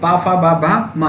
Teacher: बा जो ध्वनि होती है आपकी वो होती है ओष्ठ